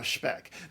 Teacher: that s becomes a sh before the p in German